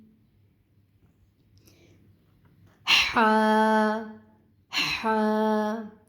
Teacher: حا کی جو ادائیگی ہے یہ وسط حلق سے ادا ہوگا